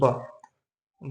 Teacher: बिना ओठों को छुए आप ब नहीं बोल सकते हैं। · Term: ओष्ठ